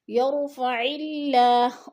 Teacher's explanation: اللہ باریک پڑھا جائے گا، اس لیے کہ اللہ سے پہلے لفظ عین کے نیچے زیر ہے